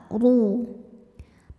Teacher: huruf ro dibunyikan secara tafkhim karena ro berharakat damah maka cara bacanya adalah Doho dibunyikan dengan tebal ru Pangka lidah · ra dibunyikan dengan tebal, ru. Pangkal lidah naikkan